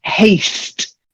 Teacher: You've got to get the s in there because otherwise it sounds too much like hate.